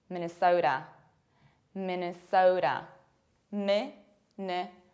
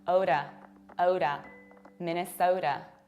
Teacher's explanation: You have to round O and you have to pronounce a very strong American T, which is something in between D and R.